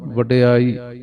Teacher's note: ਵਡਿਆਈ ਡਡਾ ਪੂਰਾ ਇਹਨੂੰ ਵਡਿਆਈ ਨਹੀਂ ਕਹਿਣਾ ਅੜਾੜਾ ਨਾ ਬਣੇ